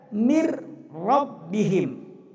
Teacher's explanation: Jadi bunyi nun mati tanwin itu lebur sama sekali, dan masuklah suara huruf ra dan lam, seperti min rabbihim, maka dibaca mir rabbihim. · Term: idgham bila gunnah